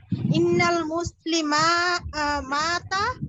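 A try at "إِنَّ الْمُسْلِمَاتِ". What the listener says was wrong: ওই যে উনি মাতা বলেছে, আপনিও মাতা টান দিচ্ছেন ইন্নাল মুসলিমাতা, এখানে টান আছে নাকি, সিঙ্গুলার না?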